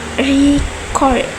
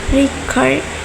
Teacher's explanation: When the stress is on the first syllables, record is a noun, but when the stress is the second syllable, record, it is a verb.